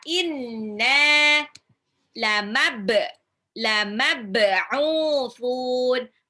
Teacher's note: Ba-nya itu jadi qalqalah dipantulkan. Au-nya 2 harokat mad tabi'i dan di belakang itu jadi mad arid lisukun.